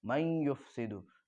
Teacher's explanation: من یفسدو کے نون کا یا میں ادغام ہو رہا ہے اور یہ ادغام مع الغنہ اور ادغام ناقص اس کو کہیں گے، تو یہاں پر میم سے یا کو ملائیں گے اس لیے کہ نون کا یا میں ادغام ہو گیا تو یہ مل گیا، اس میں بدل گیا، اب یہ نون جا کے یا بن گیا تو یا کو 2 بار پڑھ رہے ہیں۔